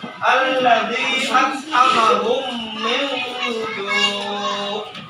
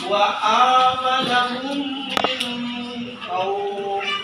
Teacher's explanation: Dibaca dengung. Kapan dibaca dengung? Apabila huruf mim sukun bertemu dengan huruf mim juga. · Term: idgham misli